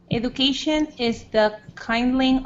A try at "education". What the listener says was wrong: One small thing. Education. It's got a j sound at the beginning. Education. So a j. Education.